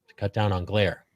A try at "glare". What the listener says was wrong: Jot is incorrect and glare, not Blair. Blair is incorrect.